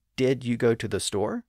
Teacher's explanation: the D sound at the end of did flows into the Y sound at the beginning of U